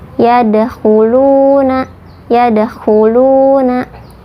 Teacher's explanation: Yad ini qalqalah sugro atau qalqalah kecil karena huruf qalqalahnya sudah sukun, pantulannya kecil.